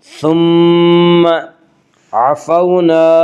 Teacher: واولین وہ واو جو ساکن ہو اور اس سے پہلے زبر ہو، واولین کو نرم آواز کے ساتھ جلدی پڑھیں گے۔ عفونا، الف مدہ، الف ہمیشہ مدہ ہوتا ہے، الف سے پہلے ہمیشہ زبر ہوتا ہے، الف مدہ کو 1 الف کے برابر کھینچ کر پڑھیں گے۔